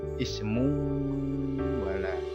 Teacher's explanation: idgham biguna, yaitu memasukkan ke huruf berikutnya dengan mendengung. Awalnya ismun wala menjadi ismu wala.